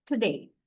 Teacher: They do not fully pronounce oo sound although we do so right. They just say uh to today.